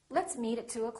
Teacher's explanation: reduce the O in the word o'clock